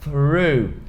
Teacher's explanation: E segundo, porque aqui é o som do TH nível mais do que hard, é o nível 2. Porque além do som do TH, você emenda com um R enrolado, aquele R de porta, porteira. Então você faz e depois já enrola a língua.